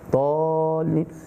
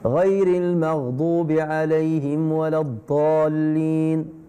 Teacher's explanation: Normalement, on doit prolonger da, 6 harakat, 6 temps. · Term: Le mad